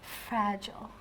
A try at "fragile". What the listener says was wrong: But we would usually say fragile. So we put a bit more stress on the second part, fragile.